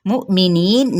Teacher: नी पे मद्दे से बिल या का कायदा, जिसको एक अलिफ या दो हरकत के बराबर खींचेंगे, नून पे वक्फ किया तो वक्फ बिल इस्कान हो जाएगा।